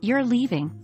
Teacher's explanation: using rising intonation at the end of a statement, You're leaving, can indicate surprise or disbelief.